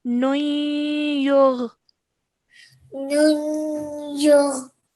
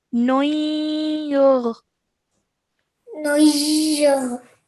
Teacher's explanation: it's a slight nasal sound between the noon and the ya